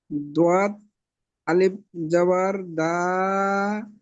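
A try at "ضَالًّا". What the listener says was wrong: না, দদ আলিফ জাবার হবে না, দত লাম জাবার দল। লাম আলিফ দো জাবার লান। তাহলে দলান।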